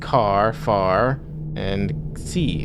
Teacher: We don't sound any final R in our words like car, far, and C. And phonetically, our common pronunciation is indistinguishable from CAA, FFA, and C.